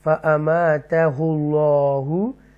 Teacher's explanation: اللہ کے نام سے پہلے پیش ہے تو یہ تفخیم کے ساتھ پڑھیں گے